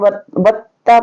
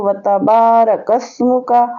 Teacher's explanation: تشدید نہیں ہے، زبر ہے تو جلدی سے پڑھیں گے، اس کو سختی کے ساتھ نہیں پڑھیں گے